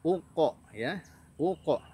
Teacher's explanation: Kemudian uqsimu, di situ ada bunyi u, uq, harus disempurnakan u-nya, jangan ok tapi uq. Nah, lalu berjumpa dengan huruf qaf dalam kondisi sukun, maka qafnya harus dikolkolahkan